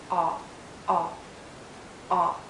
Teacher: It's a short sound and a very open and rounded sound. Make your lips rounded and lower your jaw.